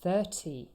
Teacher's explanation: here the stress is on the first syllable